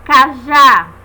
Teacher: o som da vogal que recebe o acento agudo é aberto · aí que fica em cima da vogal né ali em cima indica a vogal tônica ou seja vogal mais forte e aberta